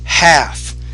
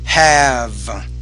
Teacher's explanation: when you have the F at the end of the word, that's a voiceless consonant. The vowel before should be shorter, half. But when you have the V sound, the vowel should be longer